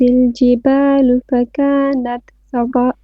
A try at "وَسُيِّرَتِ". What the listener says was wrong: Okay, سيرت, make your ra more heavy.